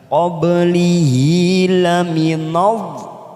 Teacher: kita panjangkan selama 6 harokat dulu, namanya bacaan mat lazim kilmi mutsaqal, yaitu tanda mat bertemu huruf yang bertasdid dalam satu kalimat, kita panjangkan selama 6 harokat atau 6 ketuk.